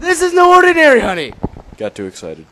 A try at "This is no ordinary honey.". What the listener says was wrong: You got too excited. You said it too fast. You killed it.